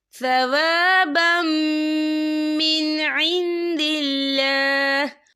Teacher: وقف کی صورت میں ہا جو ہے ساکن ہو جائے گا